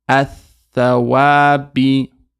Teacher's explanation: So just straight ath. We don't pronounce the lam.